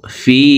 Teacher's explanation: জেরওয়ালা ফাটি জজমালা ইয়ার সাথে এক আলিফ টানি পড়ব